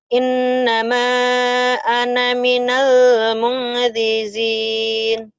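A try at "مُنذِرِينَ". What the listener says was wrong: Iya, ini salah cetak. Mungzirin ini bukan za ini. Ya, bukan mungjizin, mungzirin. Ini ro. Innama ana minal. Minalnya udah ditahan, idhar. Innama ana minal mungzirin. Mungjizin bukan ini ya. Ini nggak ada titiknya lagi.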